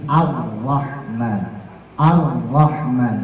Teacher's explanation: r-nya hijaiah itu adanya di sini ya adanya di langit-langit keras bagian depan belakang gusi · getarannya tidak lebih dari dua dalam sifat hurufnya namanya takrir